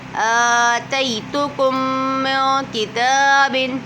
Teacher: میم ساکن کے بعد دوسری میم آ رہی ہے تو ادغام شفوی ہو رہا ہے